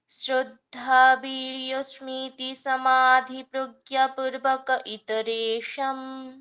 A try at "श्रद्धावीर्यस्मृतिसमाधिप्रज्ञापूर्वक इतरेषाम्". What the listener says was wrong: So certain places you are extending where it is not needed, and where it has to be extended, you are cutting it.